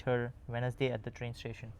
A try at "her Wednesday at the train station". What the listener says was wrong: your intonation rises at the end of the sentence, but at the end of the sentence, it should actually fall